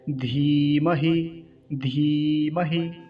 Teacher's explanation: जो बड़ी ई की मात्रा होती है उसको अधिक समय दिया जाता है बोलने में, लंबा खींचा जाता है